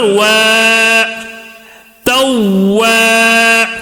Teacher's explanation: الف سے پہلے زبر آنے کی وجہ سے یہ وو کو تھوڑا کھینچ کر پڑھ رہے ہیں